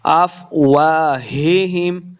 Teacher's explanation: ہم دو ہا ہیں، دونوں کو ہم نے حلق کے نچلے والے حصے سے ادا کرنا ہے